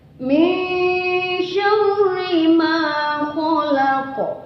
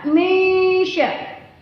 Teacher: Nun mati ketemu dengan sya, min sya. Di situ ada hukum bacaan ikhfa. Ikhfa itu artinya dibaca samar-samar.